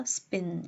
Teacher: 이 S라는 보이스리스 사운드 뒤에 오게 되면 이 aspiration이 좀 작아지게 된다라는 겁니다.